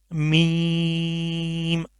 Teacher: یہ جیسے با ہم نے پڑھا تھا کہ ہونٹوں کے تر حصے سے آدھا ہوتا ہے، بٹ یہ جو میم ہے یہ ہونٹوں کے خشک حصے سے آدھا ہوتا ہے